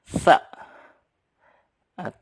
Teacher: lidahnya sedikit maju, agak keluar, jadi sa.